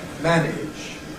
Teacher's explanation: In ‘manage’, it’s got to be a bit clipped because of the ‘-age’ syllable to follow. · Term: Rhythmic Clipping